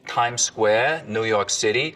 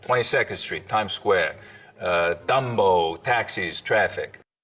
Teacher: The tongue tip hits the teeth, or close to them, on TD and N sounds instead of, a little further back.